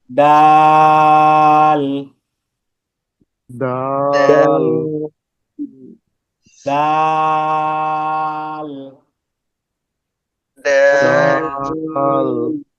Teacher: তা যেরকম ভাবে আমরা জিহ্বার আগাটা উপরের দাঁতের গোড়ার সাথে লাগিয়েছি, ডালের ক্ষেত্রে সেম প্রসেস। জিহ্বার আগা সামনের উপরে দুই দাঁতের গোড়ার সঙ্গে লাগিয়ে 3 আলিফ টান। ডালটা শুধু 3 আলিফ টান, এতটুকুই পার্থক্য। · দাল তা একই জায়গা থেকে উচ্চারিত হয় পার্থক্য শুধু কি দালটাকে তিন আলিফ টানতে হবে